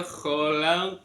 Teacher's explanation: ada qaf sukun terletak di tengah-tengah kalimat, dibaca qalqalah sughra, tipis kecil